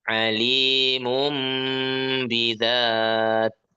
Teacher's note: kan tanwin ketemu ba suaranya jadi mim ya